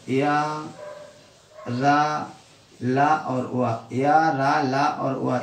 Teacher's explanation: इनका उच्चारण करते समय जीभ मुख के किसी अंग का स्पर्श नहीं करती है। मतलब ये है या रा ला और वा, इनका जब हम उच्चारण करेंगे तो हमारी जीभ है जो मुंह के किसी भी अंदर के स्थान को टच नहीं करेगी, और तब हम इनको बोल पाते हैं। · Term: अंतस्थ व्यंजन